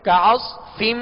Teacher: صاد کو پر اور سیٹی کی آواز میں پڑھیں گے